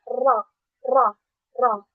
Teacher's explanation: ketika kita membaca huruf ro itu kan kayak ada getaran yang berulang-ulang gitu kayak ro takrir gitu. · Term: sifat takrir